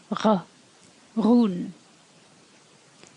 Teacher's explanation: When you add shevu to a D, in a broad context, it sounds like r. It's almost a gargle at the back of your mouth, almost in your throat.